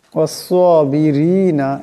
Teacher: এখানে রা নিচে জির আছে, এই রার আওয়াজটাকে পাতলা করিয়া পড়তে হবে